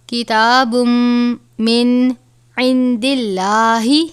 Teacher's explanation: لفظ اللہ کے لام سے پہلے زیر ہے تو اس لام کو ہم باریک کر کے پڑھیں گے